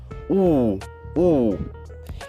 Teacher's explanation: quando você pronuncia U, você meio que faz um círculo, faz um biquinho com os lábios. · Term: arredondadas